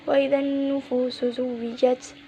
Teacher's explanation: Cara bacanya mengidghamkan kepada huruf syamsiah tersebut sehingga lam sukun tidak terbaca. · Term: idgham syamsiyah